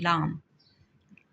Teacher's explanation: پہلوئی مسمتیں، جن کی ادائیگی کے وقت ہوا زبان کے پہلوؤں سے گزرے، مثلاً لام. لام کو جب ہم ادا کرتے ہیں تو ہماری زبان منہ کے اوپر والے حصے سے ٹچ ہوتی ہے اور پہلوؤں سے یعنی سائیڈوں سے ہوا گزرتی ہے